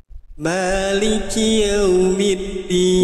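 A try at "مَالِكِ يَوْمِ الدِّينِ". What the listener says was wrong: Nah, maknya bagus jadi nggak me, tapi ya masih yeu, jangan ya. Maliki yau, jangan yeu, ya.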